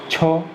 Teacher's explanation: छ दांत वाला नहीं, छ तालब्य से लग रहा है